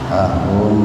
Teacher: Mimati ketemu dengan ro secara terpisah, maka harus dibaca jelas itu. Mimnya dibaca jelas di bibir, tahan dua ketukan. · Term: idhar syafawi